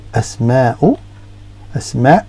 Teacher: So you can see there's a slight gap, the hiccup, like the pause I have in the middle. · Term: glottal stop